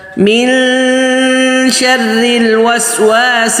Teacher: شین پتلا حرف ہے تو غنہ بھی پتلا ہوگا. میوں شریل اکثر لوگ موٹا غنہ کرتے ہیں، نہیں، یہ غنہ شین پتلا ہونے کی وجہ سے تو غنہ بھی پتلا ہوگا.